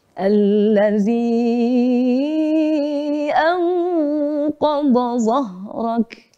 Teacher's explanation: Nada yang ketiga turun.